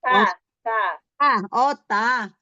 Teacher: Ta itu di ujung lidah bertemu dengan gigi seri atas ya, gigi seri yang atas. Tempat tumbuh dari atas. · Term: Huruf ta